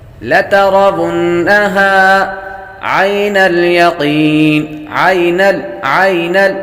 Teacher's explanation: یا حروف لین میں سے ہے، لمبا نہیں کریں گے، یقین، قاف حروف مستعلیہ میں سے ہے، یا حروف مدہ میں سے ہے، جب وقف کریں گے تو مد عارض بنے گی۔